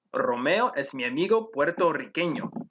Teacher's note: you would roll the rs in romeo since the r is in the initial position and in puerto riqueno since there's a double r okay i